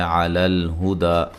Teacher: دال پہ وقف کی صورت میں مد اصلی کے برابر، یعنی کہ ایک الف کی مقدار کے برابر، اور جب ملا کے پڑھیں گے تو مد جائز، ٹھیک ہے.